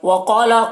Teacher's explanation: قاف کو پر پڑھیں گے اور الف مدہ ہے، اسے ایک الف کے برابر کھینچیں گے